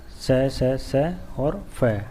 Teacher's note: अघोष व्यंजन जिनके उच्चारण में स्वर तंत्रियों में कंपन नहीं होता